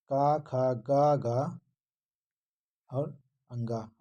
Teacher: तो का वर्ग के पांचों अक्षर क्या बोले जाते हैं? कंठ से।